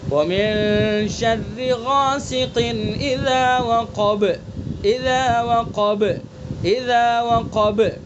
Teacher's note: قاف، طا، با، جیم، دال، یہ 5 حروف ہیں قلقلہ کے، تو ان کے اندر قلقلہ کیا جائے گا. ہم نے با کے یہاں پر وقف کر دیا تو با کے اندر قلقلہ ہو جائے گا